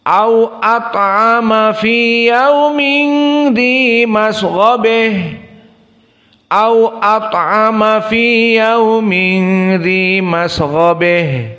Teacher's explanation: fi qaulihi ha at-ta'nits masghabah dibaca dengan al-imalah al-kubra